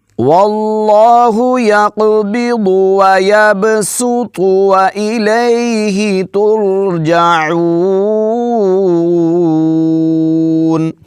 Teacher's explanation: سین پڑھیں گے، سین کو باریک پڑھیں گے اور اس کے بعد تو کو پر پڑھیں گے۔